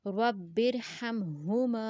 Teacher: اس ہا کا ساؤنڈ گلے کے درمیانی حصے سے آئے گا اور اس کا چیسٹ کے پاس سے آئے گا رب ارحمہما